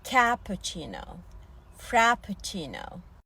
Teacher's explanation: Muhtemelen Türkçe düz a ile söylediğimiz cappuccino frappuccino Açık a ile okunuyor